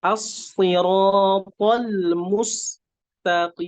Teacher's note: ada huruf sin yang memiliki sifat hamas, jadi mengalir udara ketika melafadzkan huruf sin